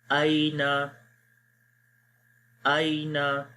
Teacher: یہاں پر یہ پہلا حرف لین آ گیا ہے، یعنی کہ یا ساکن ہے اور اس سے پہلے زبر ہے، تو یہاں پر نرمی کے ساتھ پڑھیں گے